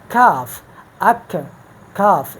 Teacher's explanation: اب مخرج نمبر 6 جو ہے اسی قاف مخرج کے ساتھ ہی جب زبان کی جڑ اوپر کے تالو سے لگ جاتا ہے لیکن منہ کی طرف، یعنی وہ جو قاف کا مخرج ہے وہ تو لحات کے قریب ہے، لیکن کاف کا مخرج پھر ذرا اس قاف کے مخرج سے منہ کی طرف آگے بڑھ کے پھر کاف ادا ہوتا ہے